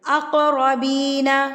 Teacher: قاف جو ہے وہ ساکن ہے، تو آپ اس کو ہلا کے تھرتھراہٹ سے پڑھیں گے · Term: قلقلہ